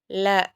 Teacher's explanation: ல, ல, ள எழுத்துக்கள் வந்து எந்த இடத்துல தோன்றுதுன்னு பார்க்கலாம். ல, நாவின் இரு பக்கங்கள் தடித்து மேற்பற்களின் அடியை தொடுவதால் பிறக்கும்